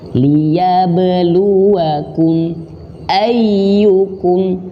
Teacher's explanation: Huruf ba mantul. Apa nama sifatnya? Qalqalah.